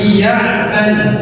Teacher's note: ditahan dua ketukan pada huruf nun sakinah yang bertemu dengan ya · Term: idgham bigunah